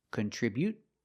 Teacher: you can use a stop T, contribute, and just stop the air without releasing the T, or you can release the T.